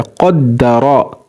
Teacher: यहाँ पर ऊपर ज़बर है तो ये रा मोटा पढ़ा जाएगा